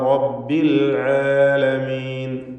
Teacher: ലക്കും ദീനുക്കും വലിയ ദീൻ, അവിടെ വലിയ ദീൻ എന്നും ഖിറാത്തുള്ളതുപോലെ റബ്ബിൽ ആലമീൻ റായിന് തഫ്ഖീം കൊടുത്ത് തടിപ്പിക്കുക. സ്വരഭാരത്തോടെ റായിനെ ഉച്ചരിക്കണം